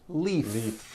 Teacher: with a voice keep the voicing going throughout the whole word if you stop the voicing at the end of the vowel e then you would be saying leaf with an unvoiced f